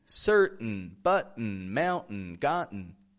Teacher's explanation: The letter T is sometimes kind of nasal when we make the glottal T.